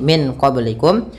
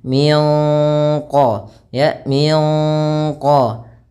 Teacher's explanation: samarkan nunnya kepada huruf q bukan lagi Min qoblikum tapi kita samarkan ke Q dan ditahan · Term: Ikhfa